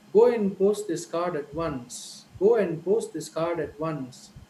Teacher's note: the time gap between one stress instance and the other stress instance the stress groups is equally the same